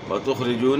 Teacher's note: خا کو آپ نے موٹا پڑھنا ہے، را کو باریک پڑھنا ہے کیونکہ را کے نیچے زیر ہے